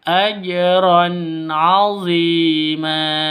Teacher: Tanwin bertemu dengan ain. Cara bacanya jelas ya, terang, karena bacaan izhar halqi